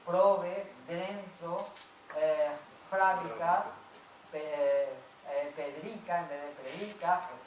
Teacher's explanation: También la R se desplaza a otra sílaba